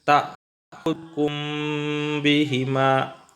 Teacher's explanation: dibaca jelas jadi tak hukum bihima ini disebut Ikhfa Syafawi tawas samar-samar di mulut jadi dibaca agak lama samarnya disitu